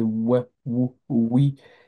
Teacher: c'est un W, un ouais qu'on utilise comme une consonne